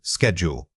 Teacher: Don't let your mouth relax and swallow that initial consonant cluster. You must actively enunciate both the S and the K sounds distinctly before continuing.